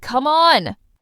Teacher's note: Disbelief goes down then up.